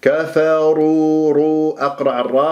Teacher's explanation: راء مفخمه لانها مضمومه ولا ارققها